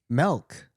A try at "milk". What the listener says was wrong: You're saying MELK.